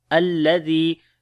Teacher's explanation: لام کو باریک پڑھیں گے، زال کو نرم پڑھیں گے اور لمبا بھی کریں گے ، یا مدہ ہے، یا کے اوپر جزم، اس سے پہلے